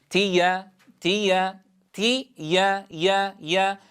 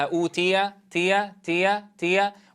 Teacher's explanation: فأما من أوتي، لاحظوا إلى صوت الياء هنا أيها الأحبة، لابد من ضبط صوتها إذ إنها محققة في هذا الموضع. تي يا لابد من الاعتماد على وسط اللسان مع ما يحاذيه من وسط الحنك الأعلى في إنتاج صوت الياء هنا. إذن لا يذهبها الكسر الذي قبلها أوتي تي، وإنما أوتي يا كما نقرأها في أثناء نطقها مفردة، لا بد أن تكون بذات الصوت عند نطقها في الكلمة.